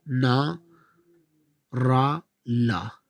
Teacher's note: जीवा ऊपरी मसूड़ों को स्पर्श करती है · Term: वस व्यंजन